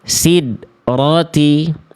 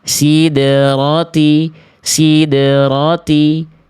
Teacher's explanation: jangan sampai ketika dal sukun ini tidak betul-betul dipantulkan sama sekali. Maka pantulkan.